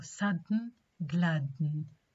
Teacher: da is released nasally when it is immediately followed by na because na is a nasal sound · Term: nasally released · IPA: /ˈsʌdn̩/ /ˈglædn̩/